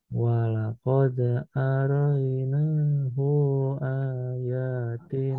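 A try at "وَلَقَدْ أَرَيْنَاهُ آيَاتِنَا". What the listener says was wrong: Hu-nya kepanjangan. Nahu, tapi nahu langsung.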